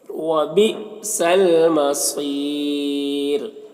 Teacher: सौद ये हुरूफ मुस्तालिया में से पुर पढ़ेंगे और यहाँ पर वक्फ करेंगे तो रॉ का पेश सुकून से बदल जाएगा तो फिर रॉ को बारीक पढ़ेंगे, क्योंकि राय साकिना से पहले या साकिन है तो रॉ को बारीक पढ़ेंगे।